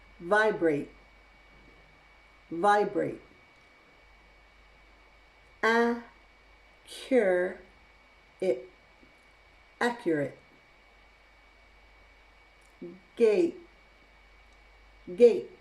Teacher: words that end in ate can also use a glottal stop